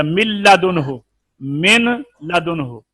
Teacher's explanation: نون کو لام میں ملایا تھا اب غنہ نہیں ہے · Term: ادغام تام